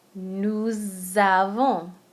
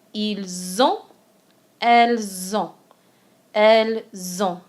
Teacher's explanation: the S in nous creates a Z sound at the beginning of the A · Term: liaison